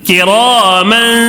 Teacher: الف مدہ، الف سے پہلے زبر ہے، تو اس کو تھوڑا کھینچ کر پڑھنا ہے